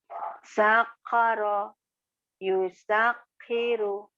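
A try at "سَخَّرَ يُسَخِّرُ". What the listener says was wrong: Kho, sakhara bukan sakoro. Sakhara. Sakhara yusakhiru.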